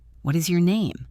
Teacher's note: What is your name? It falls on name.